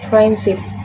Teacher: The D sound is omitted. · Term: consonant deletion